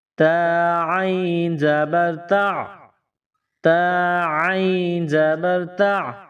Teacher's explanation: تا، تا کے اوپر زبر ہے، نقطوں والی تا ہے، اس کو باریک پڑھیں گے۔ اس کے بعد عین، گلے کے درمیان سے زور لگا کر عین کو پڑھیں گے، عین کو نکالیں گے، ادا کریں گے۔ · گلے کے درمیان سے زور لگا کر عین کو پڑھیں گے، عین کو نکالیں گے، ادا کریں گے۔ عین کے اوپر جو یہ نشان ہے اس کو جزم کہتے ہیں۔